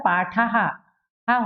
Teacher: आ की मात्रा होती है तो विसर्ग का उच्चारण क्या होता है? हा। ऐसे ही छोटी ई की मात्रा होती है, मान लो की में है और विसर्ग है तो क्या हो जाएगा?